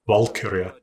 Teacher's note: Valkyria, emphasis strongly on the first syllable